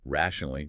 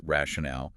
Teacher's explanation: the stress in rationally is on the first syllable, while in rationale, it's on the third.